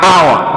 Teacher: H in this case is not a vowel, but H in this case is a consonant. But as much as it's a consonant, it is not pronounced. So in our words, it's like we are pronouncing these words beginning with a vowel, not a consonant. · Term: silent H